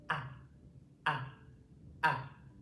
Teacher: it's coming from the back of my throat. The whole mouth is open. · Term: open mouth sounds